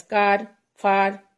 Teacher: Next monophthong sound is A. It's a long sound as car, far, etc.